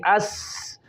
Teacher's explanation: इनमें सिफ़त सफ़ीर की वजह से सीटी की आवाज़ पैदा हुई